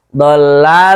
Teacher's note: lam, nun kan berdekatan makhrajnya. Lal tinggal geser saja lidahnya, tidak dilepas dulu.